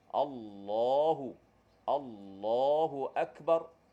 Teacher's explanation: masa sebut Allah itu pangkal lidah kena angkat sebab Apa sebab lam pada Allah itu kena baca dengan tebal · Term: lam tebal